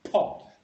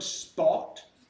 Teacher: Now, if you say the word spot, the air is no longer there for the p. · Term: unaspirated p